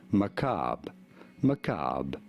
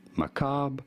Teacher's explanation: They do forget about the RE completely at the end in American English. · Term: American pronunciation